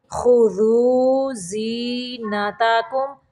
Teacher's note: زا کو سختی سے پڑھیں گے اور میم کو ظاہر کریں گے